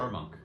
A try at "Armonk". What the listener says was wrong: There was an extra syllable in there.